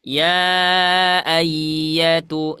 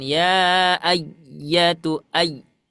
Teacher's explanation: huruf ya itu sifatnya rokhawah, mengalir suaranya